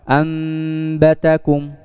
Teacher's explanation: Jadi iklab adalah ketika ada nun sukun dan tanwin bertemu dengan ba, maka nun sukun tadi itu langsung dimasukkan ke huruf ba dengan cara gunnah dan ikhfa